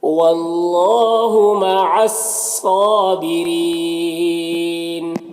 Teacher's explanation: یہاں پر را کے نیچے زیر ہے، را کو باریک پڑھیں گے، اور یہاں پر وقف کریں گے تو مد عارض وقفی ہوگا، تو اس طرح سے پڑھیں گے۔ · مع الصابرین، یہاں پر الف لام جو ہے حروف شمسی کے شروع میں ہے، صاد یہ حروف شمسی میں سے ہے، اس سے پہلے الف لام ہے کہ شروع میں ہے، تو الف لام دونوں کو نہیں پڑھیں گے، صاد کو پڑھیں گے، صاد حروف مستعلیہ میں سے پر پڑھیں گے، کھڑا زبر ہے، ایک الف کے برابر کھینچیں گے۔